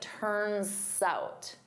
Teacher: I'm using that S to glide to the next word, but I say it as one word, turns out.